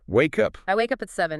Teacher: Because wake ends in a consonant sound, and up starts with a vowel sound. We just push them together. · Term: link words together